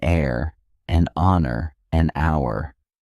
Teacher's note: Whether you use a or an before an H word depends on whether the H is pronounced, an air, an honor, an hour. In these cases, the H is silent. So the words begin with vowel sounds and an is used.